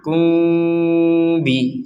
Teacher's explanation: Dibaca dengan samar kalau mim sukun bertemu dengan ba.